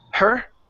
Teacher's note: so that is a ok and so you want to either fix the h by focusing on it less and saying her which is a very light H more dropping the H and connecting it to the word